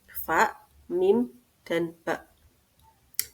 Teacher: sebagian huruf yang lain keluar dari kedua bibir yaitu Fa mim dan ba